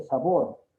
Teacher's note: Por ejemplo, en agudas dice sabor y lleva la mayor fuerza de voz en la última sílaba